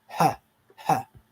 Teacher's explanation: This is a voiceless glottal fricative.